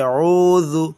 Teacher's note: عین کو نکالنا ہے، او ذو نہیں بولنا ہے بلکہ اعوذ